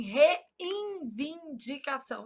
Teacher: A gente nasaliza esse N na pronúncia. A gente fala assim, reivindicação.